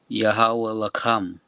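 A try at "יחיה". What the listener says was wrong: Not Yahweh. Yahaya, right? So the last Yah and Ha are joined together. So Yahaya, okay?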